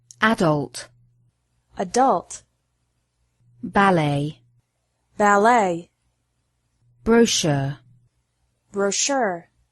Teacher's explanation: particularly those of French origin are emphasized differently in American English with the last syllable stress in American English and the first syllable stress in British English